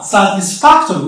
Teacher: the stress is going to be on the anti-penultimate syllable, which is fa, satisfactory.